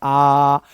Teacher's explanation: विवृत्त स्वर में मुंह पूरा खुल रहा है। जितना मैक्सिमम खुल सकता है, आप इसको ऐसे बोल सकते हो आ ऐसे नहीं इसको बोलना है।